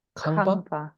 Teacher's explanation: Kangpa with aspiration is house or building